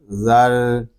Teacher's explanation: رام ساکن نہیں ہے، رام شدد ہے، اس میں تھوڑا سا تکرار کریں گے